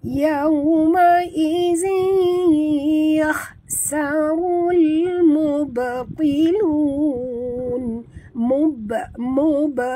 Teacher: Sifat ba adalah qalqalah, melantun ya. Jadi lantunan yang kecil, qalqalah sughra.